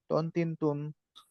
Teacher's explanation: জিবার আগা সামনের উপরের দুই দাঁতের গোড়ার সঙ্গে লাগে ত মোটা করে ত